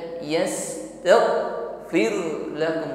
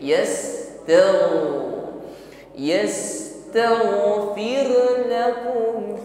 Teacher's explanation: alirkan bunyi huruf Gin jangan tertahan